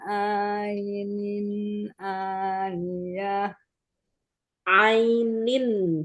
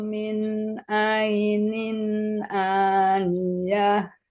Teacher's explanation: tanwinnya ketemu hamzah jadi jelas